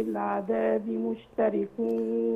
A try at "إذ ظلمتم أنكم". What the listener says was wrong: إذ ظلمتم أنكم. رقق اللام شوية.